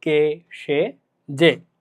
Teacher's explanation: একাক্ষর সর্বনাম পদের এ সংবৃত।